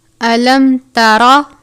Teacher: علم ترى، میم ساکن کے بعد تا ہے، اظہار شفوی کا قاعدہ لگتا ہے یعنی غنہ نہیں کرتے. را کے اوپر زبر ہے، اس صورت میں را کو پر پڑھتے ہیں